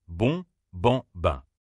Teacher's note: tu dois sentir un petit souffle sortir de ton nez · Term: voyelles nasales